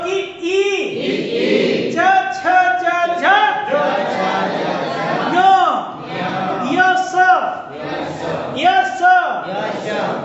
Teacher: जीभ जो है तालु से स्पर्श करती है